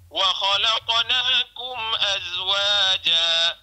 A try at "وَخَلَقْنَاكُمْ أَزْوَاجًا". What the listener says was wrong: Dia kalau nak cantik lagi Ustaz. Wa khalaqnakum kita ni getar sikit. Dia getar sikit.